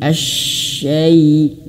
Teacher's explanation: huruf shin itu dimiliki sifat tafashi, mengalir nafas dan angin. Anginnya bertebaran di dalam.